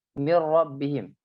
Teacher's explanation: langsung ke ra, tidak ada gunahnya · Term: idgham